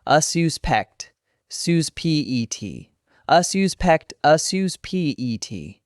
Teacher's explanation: the noun, stress on the first syllable